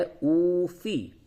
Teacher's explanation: واو کو تھوڑا سا کھینچیں گے کیونکہ واو مدہ ہے، واو ساکن کے سے پہلے پیش ہے تو اب واو مدہ ہوگا.